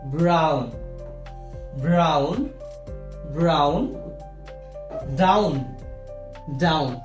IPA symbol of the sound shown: aʊ